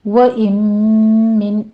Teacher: وَإِن من میں پہلے نون ساکن کا ادغام الغنہ ہے، یہاں پہ 2 کاؤنٹ کریں گے